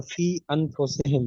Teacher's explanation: जो फी वाला मद्दा है या के ऊपर, जी वो या मद्दा होगा तो उसको एक अलिफ खींचेंगे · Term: छोटा मद्दा